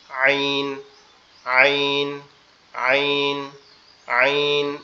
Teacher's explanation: এরপরে হচ্ছে আইন, যেটা এটা হচ্ছে আমাদের এই কণ্ঠনালীর মধ্যখান অংশ থেকে হবে একটু চাপা আওয়াজে, একটু চাপা আওয়াজে, মানে একটু গলাটা একটু চেপে হবে, আইন, আইন, আইন, আইন, এভাবে আইন, আইন, এরকম একটু গলা চেপে চাপা আওয়াজে পড়তে হবে এটা।